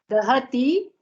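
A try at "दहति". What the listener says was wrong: No, you are making dirgha in the first letter. Keep it hrisva.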